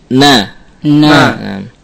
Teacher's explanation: Ada suara yang sesaat melewati khayshum ketika nun ini mutaharrikah atau berharokat · sebagian melewati ke khayshum, maka nun memiliki sifat gunnah sebagaimana mim.